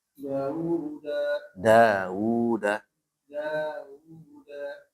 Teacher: Mad thabi'i. Maka dalnya dibaca panjang.